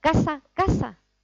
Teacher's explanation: Dicen las 2 palabras exactamente igual, porque son seseantes.